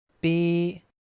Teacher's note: the Cantonese B actually starts with an unaspirated P instead of an actual B, like the B sound in the word speed.